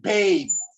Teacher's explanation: the peak, that is the vowel in babe, may also be lengthened to show that they are surprised or they are angry.